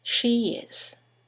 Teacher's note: there's a semivowel y that links the vowel at the end of she to the vowel at the beginning of is